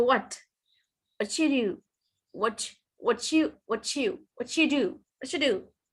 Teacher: So there is a sound ch, which appears in the middle.